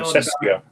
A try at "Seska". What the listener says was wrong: No, Seska. There's no I in it. It's Seska.